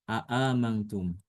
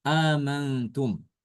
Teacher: Di sini Imam Hafs membaca a'amantum itu dengan menghilangkan salah satu hamzah ya.